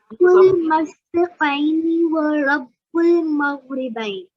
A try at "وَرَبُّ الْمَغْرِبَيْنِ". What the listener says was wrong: Yeah, don't say ra. Yeah, do improve on your ra sound.